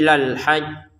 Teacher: ditekan dulu baru jimnya dipantulkan